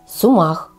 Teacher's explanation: последнее время Сумах стал очень популярным в средних широтах нашей страны и произносится это слово с ударением на последний слог Сумах ещё одно всем известное растение - это колеус произносится с